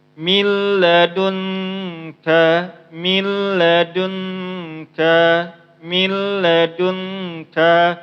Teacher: Karena di sini itu hukumnya idgham bila gunnah, maka dia tanpa dengung.